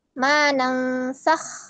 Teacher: huruf nun adalah huruf yang keluar dari alkhaisyum dan dia memiliki ghunah. Ya, maka di sini kita hukumi dengan idgham mutamasilain mutlak ya.